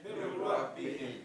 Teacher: You say Mir Rabbihim. The noon disappears.